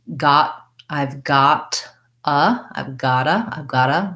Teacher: when a word ends in T and the next word starts with a vowel, for example, like got, I've got, I've gotta, then that T gets linked and becomes a flap.